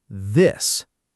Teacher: Now say this. Do you feel that little vibration in your throat? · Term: voiced th